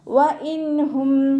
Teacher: നൂൻ സാക്കിനയ്ക്ക് ശേഷം ഇവഹാറിൻ്റെ അക്ഷരമായിട്ടുള്ള ഹാ വന്നു, നൂൻ സാക്കിനയെ വ്യക്തമാക്കി മണിക്കാതെ ഉച്ചരിക്കുക